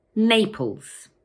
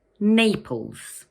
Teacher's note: It has two syllables, Naples, and the first one is stressed.